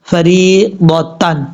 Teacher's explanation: را کے بعد جو یا ہے یہ یا مدہ ہے، ایک الف کی مقدار اس کو لمبا کر کے پڑھیں گے